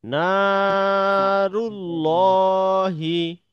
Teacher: জবর গিয়ে যখন আল্লাহ শব্দের লামটিকে ধরবে তখন হচ্ছে এটাকে মোটা করে পড়তে হবে